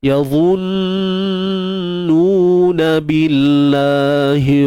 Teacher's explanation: Kalimah Allah, lafzul jalalah, kita baca dengan tarqiq, dengan nipis, kerana sebelumnya berbaris bawah.